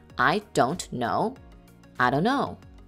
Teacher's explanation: with the T sound dropped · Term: Reduced forms